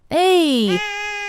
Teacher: >> [crying] [screaming] [crying] >> The gas or digestive sound. The fourth sound is eh, which sounds like a guttural sound coming from the back of the throat. It's often described as more of a grunt or a low sound.